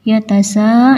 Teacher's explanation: mad wajib muttasil panjangnya enam harakat